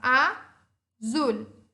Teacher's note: O zul é a minha sílaba forte. Ela é a minha última sílaba. Então, seria a minha oxítona. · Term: aguda